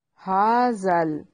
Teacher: زال کو نرم ادا کرنا ہے، یہ مد اصلی ہے